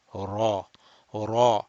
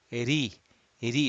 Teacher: in muraqqaq, flat ra, the tongue is relaxed, relaxed in the back, more or less flat.